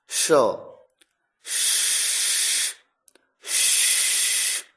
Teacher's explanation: जब आप अपनी जीभ को ऊपर वाले तालु की तरफ थोड़ा सा घुमा दें। और उसके बाद स की ध्वनि बोले तो अपने आप शलगम वाले श की ध्वनि आएगी।